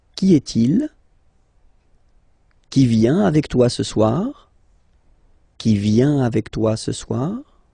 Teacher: you will have to raise your voice a little bit at the end of the question